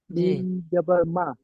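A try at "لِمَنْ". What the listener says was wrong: লি টানা হবে না লিমান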